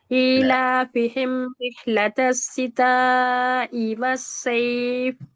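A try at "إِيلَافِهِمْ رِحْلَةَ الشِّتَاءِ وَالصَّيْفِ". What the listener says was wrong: ஈ ஈ இன்னும் கொஞ்சம் நார்மலாக தொண்டை இல்லாம தொண்டை முன்னுக்கால வரணும். ஈ சிம்பிளா நார்மலா வரணும்.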